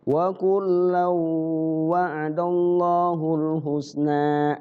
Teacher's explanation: Cara bacanya diidghamkan ke tanwin ke wawu. Qul lau, dan di wawunya digunahkan, dilagu. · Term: Idgham bigunah